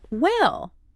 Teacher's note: You drag the word out. It sounds slow. It sounds heavy.